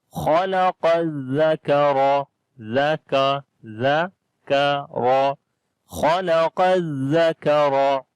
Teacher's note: Kaf we read in light sound. Ra we read in heavy sound, and due to fatha sign on it